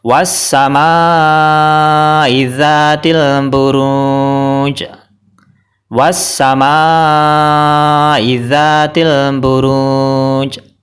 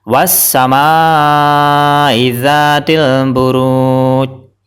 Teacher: jadi jimnya ini di diwakafkan disukun dan dipantulkan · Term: Qalqalah, qalqalah